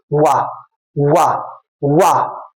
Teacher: वा जो वा होता है इसको हम बोलते हैं दंत ओट वा का उच्चारण स्थान जो है दांत और ओठ दोनों है दांतो और ओठों को स्पर्श करता हुआ हमारे मुख से बाहर निकलता है जैसे बोलिए वा वा वा वकार दंत ओष्ठ इसलिए बोलते हैं